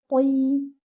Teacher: The ta over here is with kasra. So even though your ta is at the lowest level of tafkhim, but still your ta should sound heavy. Tay. Okay, give it 2 counts.